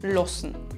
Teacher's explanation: Der Vokal A wird sehr oft in unserem Dialekt zu einem O, lossen. Der Imperativ lass wird also zu los.